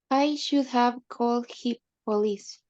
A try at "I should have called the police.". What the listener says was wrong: the police. Yes, and I missed the T.